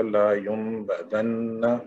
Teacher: نون پہ جو ہے وہ اقلاب کریں گے چونکہ با متحرک آ رہا ہے اس کے بعد